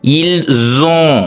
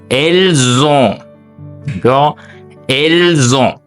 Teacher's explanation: என்றது வந்து ஒரு வையல் ஓ என்றது ஒரு வயல் ஒரு உயிரெழுத்து அப்ப அந்த ஓ வந்து உயிரெழுத்தாக இருக்கிற காரணத்தினால் நாங்கள் வந்து அதை இணைத்து உச்சரிக்கிறோம் ஓகே அப்ப வந்து இல்சோ என்று உச்சரிக்கிறோம் இல் ஓகே அடுத்து அவள்கள் வைத்திருக்கிறார்கள்